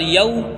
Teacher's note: یا واو زبر یو میں واو لین ہوگا کیونکہ واو ساکن سے پہلے زبر آیا ہے، اس لیے اس کو جلدی پڑھیں گے